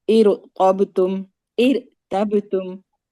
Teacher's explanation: अगर रॉ साकिन है यहाँ पे लेकिन पीछे कसरा है, जी, नॉर्मली तो जेर की सूरत में हम बारीक पढ़ते हैं, लेकिन यहाँ पे कसरा आरजी है तो हमें मोटा पढ़ना है